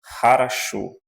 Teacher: quando o O não aparece na sílaba tônica, então ele é pronunciado como um A, em russo.